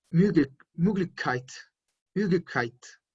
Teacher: pongan sus labios como si fuesen a pronunciar una O, pero en lugar de pronunciar la O, pronuncian una E. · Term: O umlaut